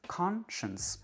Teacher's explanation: Ça, c'est vraiment la réduction vocalique qui fonctionne à plein. C'est la première syllabe qui est prononcée pleinement et toutes les autres syllabes sont réduites.